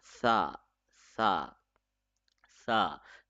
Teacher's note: Tip of the tongue will be touching at the edge of the upper teeth.